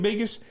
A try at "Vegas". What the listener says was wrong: Vegas. Vegas. No, you said with the B, fool.